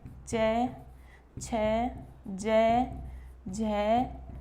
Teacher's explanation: देखिए, तालु वो स्थान होता है, जैसे हम च का उच्चारण करते हैं, च का उच्चारण करते समय हमारी जीवा जिस स्थान पर स्पर्श करती है वही स्थान तालु कहलाता है। तो इसका सूत्र है ईचुये शानाम तालु। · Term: तालव्य